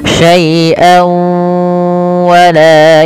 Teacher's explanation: kita perlu baca dengan gunah yaitu ditahan